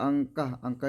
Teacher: karena ada nun sukun bertemu dengan Kaf cara bacanya itu samar-samar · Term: ikhfa